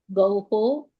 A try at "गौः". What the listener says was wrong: Gauhu, not Gauho. Gauhu, not Gauho. Gauhu. Gauhu,